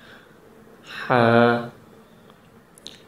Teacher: سینے کی گہرائی میں سے جب آواز نکلتی ہے تو اس وقت ہا پڑھا جاتا ہے، لیکن یہ والا ہا جو ہے جیم کے بعد جو آتا ہے، اس کو پڑھنے کے لیے گلے کے درمیان کا حصہ استعمال ہوتا ہے۔ سینے کی طرف سے یہ آواز بالکل نہیں نکلتی۔